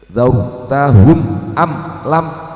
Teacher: Ada mim sukun bertemu alif di sini, yang namanya izhar syafawi, harus jelas. Dzawtahum am lam, tidak boleh ada dengung sama sekali.